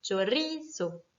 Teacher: Le mot chorizo, qui est un mot qui se finit donc par un O, donc par une voyelle, va être accentué naturellement sur ri.